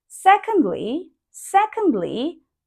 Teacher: try to sound like not rising and not falling but as we call low falling tone. So it if you can see it's like a tick.